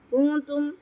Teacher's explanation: نون ساکن بعد تا رہا ہے تو اس پہ ہم اخفا کریں گے